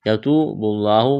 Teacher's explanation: یتوب اللہ، واو مدہ ہے، ایک الف کے برابر کھینچنا ہے، لفظ اللہ کے نام سے پہلے پیش ہے، لفظ اللہ کے نام کو موٹا کرنا ہے